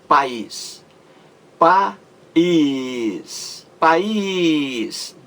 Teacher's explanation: A palavra país, como você vê, a sílaba mais forte é a última. Is. Palavra oxítona.